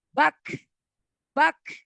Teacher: Bak, ada suara halus yang keluar ketika disukun. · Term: hamas